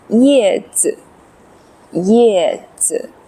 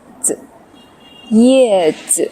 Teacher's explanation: neutral tone or no tone. Light and quick.